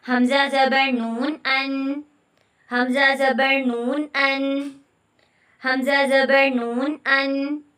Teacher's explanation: زبان کی نوک اور اس کے مقابل سامنے کے اوپر کے 2 دانتوں کے مسوڑوں سے ادا ہوتا ہے. مسوڑوں سے لگے تو یہ حروف ادا ہوتا ہے. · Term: طرف اللسان